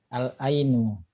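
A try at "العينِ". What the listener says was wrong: Al-aini ya di kasroh.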